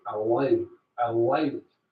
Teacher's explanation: So it's coming from the back of the mouth with the tongue down rather than allow at the front of the mouth. · So it's a dark L, not a light L on the L of allowed.